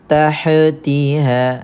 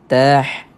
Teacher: Kemudian tuan-puan, kat sini ha pedas. Pastikan sebutannya jangan terlantun dan jangan kita tebalkan ha tersebut